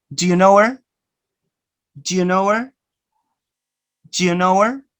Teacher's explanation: Notice you don't pronounce the sound ha. · you omit the sound ha, and you link these two